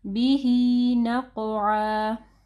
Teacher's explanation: قاف کو ہیوی پڑھنا ہے اور قاف کے اوپر جو ہے قلقلہ ہوگا